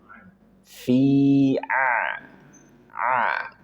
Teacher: Kemudian ain tenggorokan bagian tengah. Fi a tekan tengah tenggorokan tekan fi a.